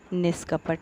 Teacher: अब विसर्ग के बाद क है और विसर्ग से पहले न में ई स्वर है तो इसलिए यहाँ पर किसको, विसर्ग को आधा श यानी मूर्धन्य श हो गया है, तो शब्द बना है निष्कपट